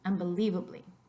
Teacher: You can hear the emphasis in un. You can also hear it on the IE for unbelievably